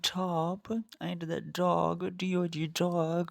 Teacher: and D the t o top and the dog do dog the air passage is completely closed by the Tongue